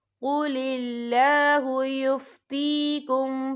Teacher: यस्तफ्तूनक कुलिल्लाहु युफ्तीकुम, या देखिए कुलिल्लाह, या अल्लाह का नाम बारीक पढ़ा जाएगा क्योंकि अल्लाह के नाम से पहले ज़ेर है